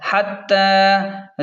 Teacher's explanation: تا کو ایک الف کے برابر کھینچیں کیونکہ تا پر کھڑا زبر ہے